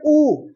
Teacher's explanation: हमारा होठ बाहर आ रहा है ना